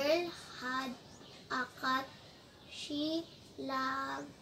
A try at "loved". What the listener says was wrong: Loved. Very good.